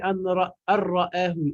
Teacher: je vais faire pénétrer le noun dans le ra